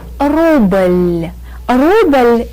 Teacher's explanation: Rubble ends in a very light very soft l sound